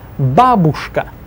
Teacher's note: Stress the ba first syllable. Babushka. I don't want to hear any babushkas ever in my life again.